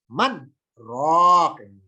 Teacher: Jadi antara man dengan roh ada tenggang waktu jeda sebentar.